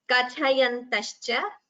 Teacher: the tha is mahaprana, ka is alpaprana. So that should be differentiated clearly.